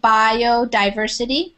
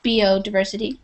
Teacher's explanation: we say bio with a long I sound